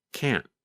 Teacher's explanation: pronunciation between the positive form can and the negative form can't sometimes you can hear the letter T when we say can't but other times it is harder to hear